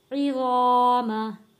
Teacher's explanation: الف سے پہلے زبر ہے، حروف مدہ ہے، ایک الف کے برابر کھینچ کر پڑھیں گے۔